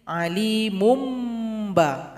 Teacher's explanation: surat al-anfal gabungkan dengan awal surah at-taubah karena di situ ada tanwin berjumpa dengan ba maka berikan iqlabnya Alimun menjadi alimum ba jadi didengungkan di situ